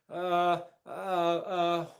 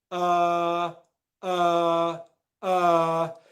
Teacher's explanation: it's very very relaxed and it comes from the middle of the mouth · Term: er sound